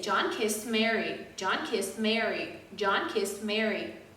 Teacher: when i use mary i emphasize mary